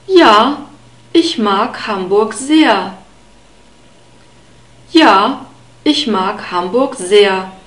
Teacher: We have a soft S at the beginning of sehr and a long E sound and a central A sound. · The H is only there to make the vowel E long. And the R is pronounced like a central A sound. So it's not a guttural R.